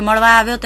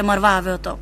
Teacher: ળ ને સ્થાને ર ઉચ્ચારાય છે